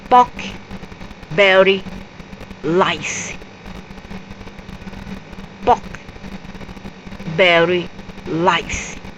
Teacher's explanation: they change the l for the r sounds